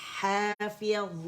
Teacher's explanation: ضا موٹا ہے، اطباق والا لیٹر ہے